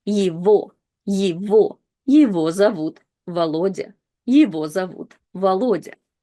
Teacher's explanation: O, we can clearly hear его, because it's stressed, so it's not reduced to I anymore. But E is not stressed, so it again is reduced to kind of like this Y sound.